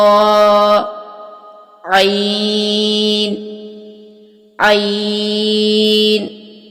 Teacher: یہ ہلکی حروف میں سے ہے، اس کو آپ نے اچھے سے حلق کے درمیان سے ادا کرنا ہے